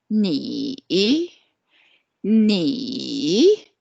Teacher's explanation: the third tone we go down and we go up